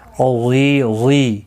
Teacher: غی یا مدہ ہے، ایک الف کی مقدار کے برابر کھینچ کر پڑھیں گے